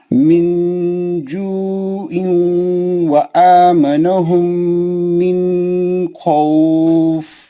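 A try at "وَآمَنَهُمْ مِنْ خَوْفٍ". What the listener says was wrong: मिन में गुन्ना नहीं करना, नून को जल्दी पढ़ना।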